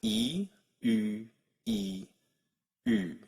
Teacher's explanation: round your lips without moving your tongue at all, your tongue should stay all the way up in the front, as high as it can go, E. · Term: rounded vowels